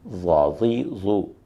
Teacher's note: زبان کی کروٹ جب بلائی داڑوں سے لگے تو ضاد ادا ہوتا ہے۔ بائیں طرف سے نکالنا آسان ہے، دائیں طرف سے نکالنا ذرا مشکل، اور دونوں طرف سے زبان کو فولڈ کر کے نکالنا بہت ہی مشکل ہے۔